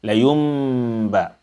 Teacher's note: You must turn the noon, the silent noon, into silent meme.